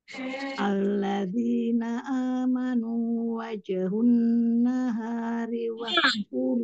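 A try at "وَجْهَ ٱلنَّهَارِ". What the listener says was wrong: han, bukan hun. Hanya fathah.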